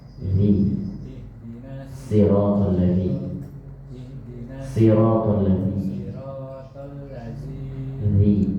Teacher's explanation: Keluar lidahnya. Kalau tidak keluar maka belum keluar huruf za.